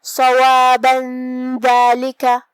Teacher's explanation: اگر ہم یہ آیت کو اگلی آیت کے ساتھ ملا کے پڑھے تو جو کہ حرف الدال کلمت ذالک میں حروف الاخفاء میں سے ہے اور اخفاء کا معنی ہے چھپا دینا، تو ہم یہاں تنوین کو چھپاتے ہوئے لیکن غنہ کے ساتھ یہ حکم کو ادا کریں گے